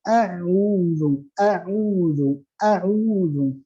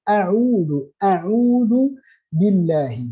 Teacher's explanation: Saat kita baca ain a'udzu itu ke belakang. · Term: huruf ain